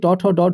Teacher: কার সঙ্গে উচ্চারিত হচ্ছে এর সঙ্গে হচ্ছে মূর্ধার সঙ্গে উল্টানো জীবভাগ্র এগুলো উচ্চারণ করতে গেলে জীবটা উল্টে যাচ্ছে এবং অগ্রভাগ জীবের অগ্রভাগ উল্টে গিয়ে উচ্চারিত হচ্ছে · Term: মূর্ধন্য বর্ণ